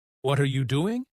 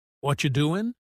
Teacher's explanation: They connect their words. Instead of what are you doing, they say what you doing.